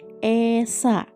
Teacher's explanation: Huruf E diucapkan dengan lidah tidak menyentuh langit-langit mulut atau menggantung di tengah dengan bentuk mulut melebar.